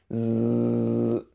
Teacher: Notice that when you're making this sound, you're buzzing your tongue against your front teeth. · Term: buzzing sound